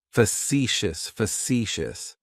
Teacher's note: That first syllable has that schwa, that sound.